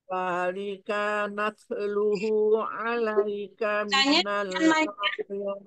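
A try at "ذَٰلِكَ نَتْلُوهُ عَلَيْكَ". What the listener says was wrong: Afwan, kanya jangan panjang. Zalikanat, kanya jangan panjang.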